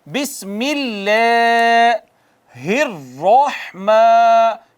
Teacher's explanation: ہم ہونٹ گول کریں گے، زباں اوپر تالو کی طرف جائے گی تو را موٹا ہو جائے گا